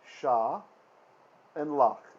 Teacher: It's 2 syllables. The first syllable is open. It's open because it's followed by a vowel sound. The second syllable is closed because it ends in a consonant. Lach. That's also why we have that short vowel there.